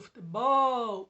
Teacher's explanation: esse bol é o som mais forte, então ela é oxítona.